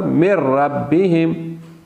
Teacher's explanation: من ربہم، یہاں پہ ادغام ہے لیکن غنہ موجود نہیں